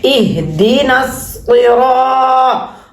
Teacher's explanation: دی، دی، نون صاد زبر نس کو الف لام کینسل ہے اور صاد کی آواز جو ہے وہ موٹی ہوگی، بھری بھی ہوگی